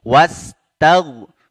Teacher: tetap harus terbaca ya jangan sampai wastagfir saja h-nya hilang ya tetap harus berhenti di makhraj huruf h-nya yaitu dienggorokan bagian bawah